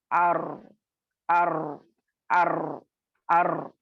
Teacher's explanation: अब जब रॉ अदा करती हैं तो क्या होता है, अर अर अर अर, तकरीर हो रही है, कपकपाना हो रहा है, थरथराना हो रहा है, ठीक है। ये बगैर ये किए आप अदा नहीं कर सकते इसको। · तकरीर जिससे हुरूफ की आवाज दोहरी जैसी मालूम हो, लेकिन असल में दोहरी नहीं होती, ठीक है, महसूस हमने ऐसा होता है, लेकिन एक्चुअली वो आपको लिटरली वैसा नहीं रहता।